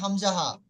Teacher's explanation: কণ্ঠনালীর বুকের দিকের অংশ হতে উচ্চারণ হয়